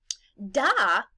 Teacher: if you sound that out is further back in the mouth the tongue hits the roof of the mouth right around the teeth